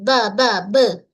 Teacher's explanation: Pada huruf Ba, kita lantun kan? Ba huruf bibir.